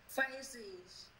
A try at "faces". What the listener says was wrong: Ủa nó không có gì em, nó là xì chứ sao mà gì? Em đọc thầy, mà em có đọc là face không không? Face. Faces.